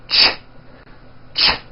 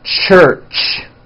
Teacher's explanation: It's a combination of the T sound, t, and the SH sound, sh. When you put these two sounds together, you get a ch, ch.